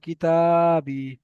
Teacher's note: আলিফ মাদ্দাকে এক আলিফ পরিমাণ টান দিয়ে পড়তে হবে